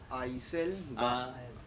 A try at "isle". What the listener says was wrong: I'll. S is silent.